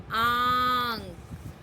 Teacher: चंद्र बिंदु का उच्चारण होता है आंग। इसमें हम मुंह बड़ा खोलते हैं आंग और इसकी ध्वनि मुंह और नाक से निकलती है, इसलिए इसे अनुनासिक भी कहते हैं।